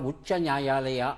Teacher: ಒತ್ತು ಹಾಗೆ ಉಚ್ಚಾರಣೆ ಅಂದಾಗ ಅದು ಅಲ್ಪಪ್ರಾಣವೇ ಆಗಿರುತ್ತೆ ಮಹಾಪ್ರಾಣ ಆಗಲ್ಲ